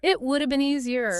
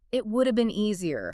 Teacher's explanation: glide right over the woulda and put the stress on the important word, the adjective. Stress, easier.